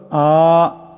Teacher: এই হামজাটাকে এক আলিফ পরিমাণ লম্বা করিয়া পড়তে হবে। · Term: হুরুফে মাদ্দা